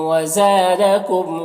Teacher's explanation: یہاں پر الف سے پہلے زبر ہے، الف مدہ ہوا، کم کے میم میں اظہار شفوی ہے